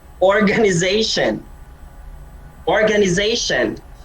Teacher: The stress is on the Z because the word ends in T-I-O-N. For most words that end in T-I-O-N, the stress is on the penultimate syllable.